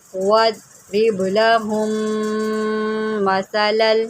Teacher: میم مشدد ہے، یہاں پر غنہ کریں